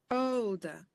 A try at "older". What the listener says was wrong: So yeah, I would say that's o, not or.